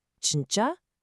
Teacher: You have to ask it as a genuine question with a slightly rising intonation at the very end